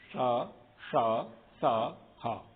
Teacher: पहला वाला जो श है उसको तालव्य श कहते हैं, दूसरा है उसको मूर्धन्य श कहते हैं, तीसरा है उसको दंत्य सा कहते हैं। हिंदी में आप लोग जो है ना, सीटी वाला सा या शंकर वाला सा, षटकोण वाला सा और सड़क वाला सा, ये कहते हैं। · इन 4 वर्ण के समय पर थोड़ा सा रगड़ करके निकलती है हवा, इसलिए गर्म अधिक हो जाती है। इस कारण से इनका नाम ऊष्म वर्ण है।